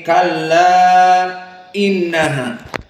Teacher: dibaca dengan alisba kenyang enam harakat paling panjang Kenapa karena dia Mad Jaiz munfasil Kalla Mad thi'i bertemu dengan